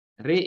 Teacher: Satu wajah saja. Re, ra dibaca imalah re, hamzah dibaca imalah e, jadilah re. Ini satu wajah saja.